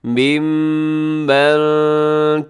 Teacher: یہاں میم مشدد پہ آپ نے غنہ کرنا ہے